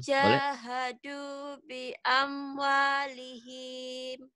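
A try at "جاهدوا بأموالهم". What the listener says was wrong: Pendek, nggak ada yang panjangin. Jahadu bi amwalihim.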